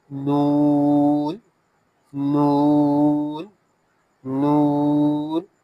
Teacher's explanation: the tongue touches back side of your upper gum. Sound comes out from nose.